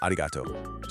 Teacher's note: That hard ku sound at the end just softened. It became a vowel, an o sound, and poof, arigataku becomes arigato.